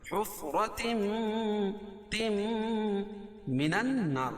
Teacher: نون مشدد اس میں غنہ ہوگا اور الف سے پہلے نون کے اوپر زبر ہے تو الف مدہ، اور را کو باریک پڑھیں گے